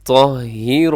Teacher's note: أَن طَهِّرَ أَن طَهِّرَ، اسے اپنے طاہرہ نہیں پڑھنا، یعنی طا کو اپنے تا نہیں پڑھنا، طا موٹا پڑا جاتا ہے